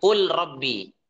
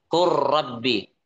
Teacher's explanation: Contohnya apa kalau lam ketemu ro? Contohnya qul rabbi ya, qul rabbi maka bacanya bukan qul rabbi ada lam sukun qul rabbi bukan tapi qur rabbi. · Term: idgham mutaqaribain